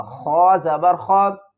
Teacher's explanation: خواہ کو ہم پر پڑھیں گے، حروف حلقی ہے، حلق سے ادا کریں گے، حلق کے اوپر والے حصے سے ادا ہوگا